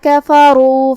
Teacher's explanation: کلمت کفروا میں یہاں حرف الرا ہے اور اس پہ پیش ہے. یہاں را کا حکم ہے تفخیم. ہمیں اسے بھاری آواز میں پڑھنا ہے